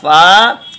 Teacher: इसमें आपके ऊपर के दांत नीचे के होंठ से लगाएंगे